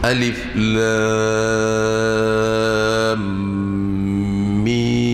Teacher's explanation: Jadi musaqqal, jadi maknanya lam bertemu dengan mim di sini menjadi lam adalah mad lazim harfi musaqqal, dan mim adalah mad lazim harfi muhaffaf. Jadi kedua-duanya dibaca dengan 6 harakat